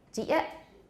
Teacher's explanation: there's a nice sharp glottal stop at the end · a final t can turn into a glottal stop very easily so there's no t there there's just glottal stops